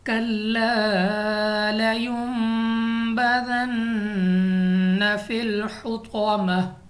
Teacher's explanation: نون ساکن کے بعد ہمارے پاس حرف با آ گیا ہے، تو ہم یہ اقلاب کریں گے، یعنی غنہ کر کے پڑھیں گے